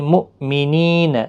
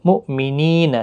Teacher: حمزہ ساکن کو جھٹکی کے ساتھ ادا کریں گے، مومنین نہیں پڑھنا ہے، مؤمنین، نی یا مدہ ہے۔